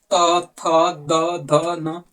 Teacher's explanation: त बोलना होगा तो आपका जीभ जो है दांत में सटेगा